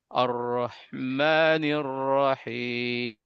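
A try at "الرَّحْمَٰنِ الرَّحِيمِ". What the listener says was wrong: Di sini kurang hak yang terakhir. Rahim. Masih sedikit lagi Pak.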